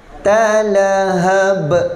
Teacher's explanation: Naran, dua harakat, talahab. Kita berhentikan dengan huruf qalqalah, maka kita qalqalahkan dia.